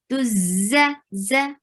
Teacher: And for za, you'll give safir. Very important sifa over here. Tuz. This buzzing sound should be there. Tuz. For fatha, open your jaws and give a very short sound.